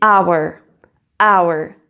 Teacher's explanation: Tu écris avec un H, mais tu ne le prononces pas. Et donc, là, on commence avec le son d'une voyelle. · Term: H muet